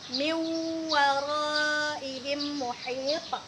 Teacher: Maka nun matinya itu tidak kita baca, langsung kita masukkan bunyi waw ke dalamnya. Makanya bunyinya menjadi miu gitu. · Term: idgham bi gunnah